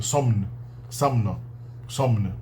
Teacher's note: o dalmaciano e o romeno preservam o MN separados